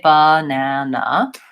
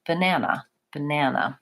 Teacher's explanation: they say the first and last syllables quickly, and they say the middle syllable longer. So I don't say banana, I say banana, banana.